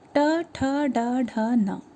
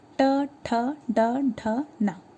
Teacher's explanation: आप इसको उच्चारित करके देखिए, ये मूर्धा स्थान है, मतलब मूर्धा का पोर्शन ये है, मतलब आपके बिल्कुल ऊपर वाला हिस्सा, वहाँ से आपकी जीभ टच होते हुए निकल रही है।